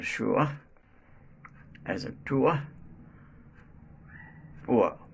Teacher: This sound starts at u and glides to a, as in shua, as in tua, ua. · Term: uva